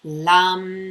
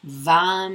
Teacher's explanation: a long sharp consonant, kind of medium length vowel, and then a long M at the end